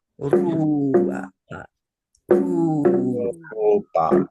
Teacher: you can roll that first R because that's a consonant.